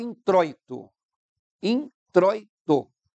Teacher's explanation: introito tem um ditongo decrescente porque tem primeira a vogal o e depois o i